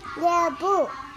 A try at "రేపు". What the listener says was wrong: లేపు లేపు లేప అన్నావు. రేపు లేపు కాదు, రేపు అను.